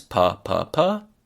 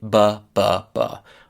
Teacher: Puh does not have vibrations, and buh does have them.